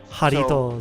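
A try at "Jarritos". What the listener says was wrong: So, Warito. Like, it's Jaritos, but it's... You pronounce the jar like wah.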